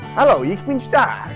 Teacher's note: stark starts with a sh sound